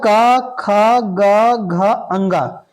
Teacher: अंग इसका उच्चारण में हमारी जीवा कंठ से आवाज निकलती है क वर्ग के उच्चारण में कंठ से आवाज निकलता है इसलिए इसको कंठ बोलते हैं इसका उच्चारण स्थान कंठ होता है क वर्ग का उच्चारण स्थान